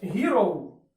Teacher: Буква Х тут нагадує більше г. Ось у таких випадках саме звук ги й може з'являтися в англійській, коли ми використовуємо літеру H.